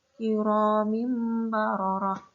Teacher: Itu ada kasroh tanwin bertemu dengan ba. Cara bacanya bukan Kiromin baroroh, bukan begitu, tapi menjadikan mim. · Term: iqlab